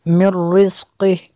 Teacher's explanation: نون ساکن کے بعد را ہے، حروف یارمالون میں سے تو یہاں پہ غنہ بھی نہیں کرنا، را اور لام میں غنہ نہیں ہوتا